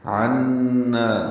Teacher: نون مشدد پہ غنہ، نا الف مدہ ہے